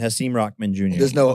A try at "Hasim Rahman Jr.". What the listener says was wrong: There's no hard K.